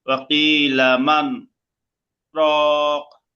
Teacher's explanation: শ্বাস জারি রেখে আওয়াজটা বন্ধ করতে হবে। তার মানে একটু থামতে হবে, থামলে আওয়াজটা বন্ধ হবে। আর এখানে গুন্না হবে না। মান রক করতে হবে।